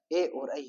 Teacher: ए और ऐ है, वो कंठ और तालु से बोले जाते हैं।